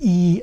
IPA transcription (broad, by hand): iː